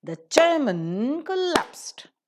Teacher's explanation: In isolation, man is pronounced as man, but when we pronounce it in the connected speech, in order to maintain the rhythm of the language, man is reduced to mun. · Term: weak form